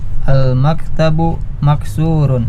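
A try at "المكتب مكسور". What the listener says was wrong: Iya.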